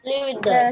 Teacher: the t in the it and t in the there is merged